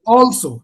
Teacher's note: So the stress lies on the first syllable.